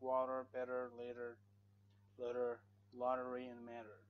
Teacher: the t is between A and E so you say water you remove the te and put R sound just to make it like an American person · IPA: /t̬/